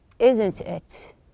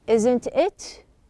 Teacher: We have the same tag question but in number three we said isn't it lowering in number four isn't it? We made it higher.